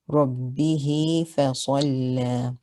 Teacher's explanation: So this is mad sila sughra, just like the wow that we did in the previous, in the first half of the surah. Here it's a ya, elongating the kasra. So the ruling here is mad sila sughra, yumad bimiqdar harakatain. You elongate it for 2 counts.